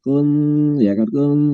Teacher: Ketika huruf nun sukun atau nun tanwin itu nanti ketemu dengan huruf ikhfa, tak itu termasuk huruf ikhfa, maka mesti kita bacanya samar